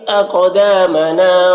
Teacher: اقدامنا قاف میں قلقلہ ہوگا اور قاف کو پر پڑھیں گے۔ دا میں الف مدہ ہے، نا میں بھی الف مدہ ہے۔